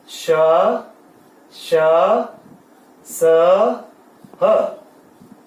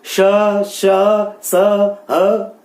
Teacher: अर्थात इसमें क्या होता है, घर्षण होता है, रगड़ होती है, इसमें रगड़ते हैं ये शब्द आपस में, ठीक है। तो जब हम इनको बोलते हैं तो हमारे मुंह में घर्षण होता है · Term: ऊष्म व्यंजन